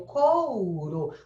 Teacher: Então, aí eu tenho o couro. Você vê que o U, ele quase desaparece, né? Exatamente porque ele é uma vogal pronunciada com metade da força. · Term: semivogal